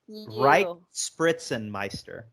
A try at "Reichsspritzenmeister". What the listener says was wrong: But there's no P. It's REICHSMASTR. There's not a P. The letter P.